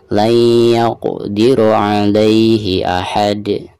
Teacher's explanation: huruf dal tersebut harus dipantulkan dengan suara pantulan yang tebal karena dihukumi qalqalah kubro